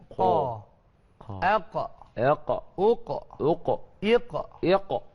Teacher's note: Huruf qaf ni dekat pangkal kita punya tekak dekat pangkal apa lidah dah. Ujung nak pergi ke tekak.